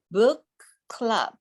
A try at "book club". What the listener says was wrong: Nope, book club. I hear you releasing that K a little bit. You only need to release it one time. Book club.